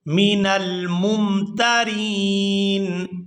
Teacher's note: میم کو دوسری میم کے ساتھ ملائیں گے